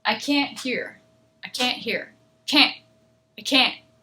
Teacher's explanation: i'm not going to make that t really loud okay it's just going to be the air will stop